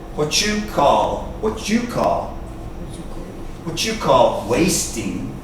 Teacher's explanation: the T-U together sometimes sounds like a ch sound.